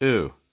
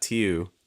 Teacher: We don't want to do like a British one. So it's not EU, it's just oo. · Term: the oo sound